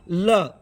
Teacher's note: जीभ तालु को छुए किंतु मुंह के दोनों बगल से हवा निकल जाए तो पार्श्विक होता है